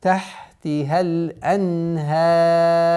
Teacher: Ра переходит в сукун, и она становится твердой при остановке.